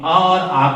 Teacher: स्वरों के उच्चारण स्थानों में अ और आ का उच्चारण होता है कंठ से